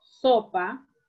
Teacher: So. Esa sería la sílaba tónica. Y pa sería la sílaba átona.